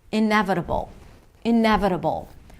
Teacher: Primary stress is on 'ne' 'ne', iNEvitable.